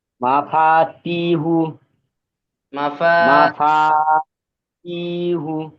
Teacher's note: যেমন এখানে ফার জি সাথে আলিফ রয়েছে না, এই যে আলিফের ডান দিকে যাবার এসছে, এখানে আলিফ মাদ্দা হবে, আলিফ মাদ্দাকেও একালিপ টান দেব। বাকি প্রথমে এবং শেষে এই যে দুটো হারাকাত রয়েছে, হারাকাতকে আমরা টান দেব না।